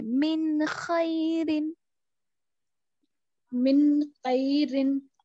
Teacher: तो यहाँ पर नून को जाहिर करना है, आपको छुपाना नहीं है